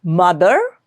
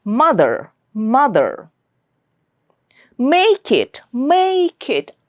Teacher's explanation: M sound is coming through the nose. The air is coming out through the nose. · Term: nasal